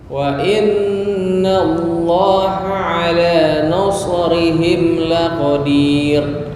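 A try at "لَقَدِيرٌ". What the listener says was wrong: Nah, masih tafkhim. Itu dihilangin. Tipis lang qadir.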